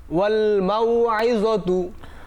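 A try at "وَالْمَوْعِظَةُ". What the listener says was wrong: আচ্ছা গুড, মাশাআল্লাহ।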